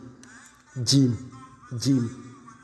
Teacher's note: à droite à droite on a la lettre Jim Jim [Musique] le milieu de la langue contre le palais dur forme le point d'articulation de la lettre Jim